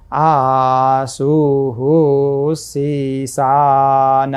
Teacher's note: उदेखि पर रहेको विसर्गको उच्चारण हु समान हुन्छ, रस्व हु समान हुन्छ।